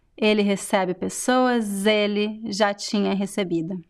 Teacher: we usually make a connection, a liaison, and the S is pronounced like Z.